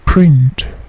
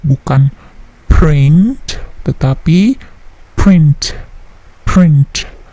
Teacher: Print, P-nya juga tidak terlalu plosif